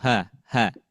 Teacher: kita rasakan dari tenggorokan bagian bawah, dekat dengan dada, tapi bukan dari dada